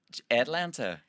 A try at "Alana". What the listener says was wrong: You know, Atlanta, the state. Drop the T. Alana.